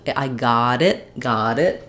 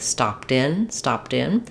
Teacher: the T becomes a flapped t and it sounds more like a d